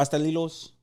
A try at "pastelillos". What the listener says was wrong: Patalillo. Spanish people don't really pronounce the S's like that. So it's like when you say dos, they don't say dos, they say do.